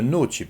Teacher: the t is going to become CH because it's before an I